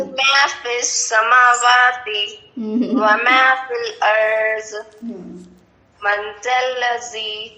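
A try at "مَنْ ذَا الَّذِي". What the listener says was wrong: Logic कहीं पर भी लाम को मोटा नहीं बनाएंगे, कहीं पर भी, सिर्फ अल्लाह की बात थी वहाँ, अल्लाह की बात थी।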